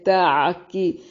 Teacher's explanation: قاف کو موٹا ادا کریں گے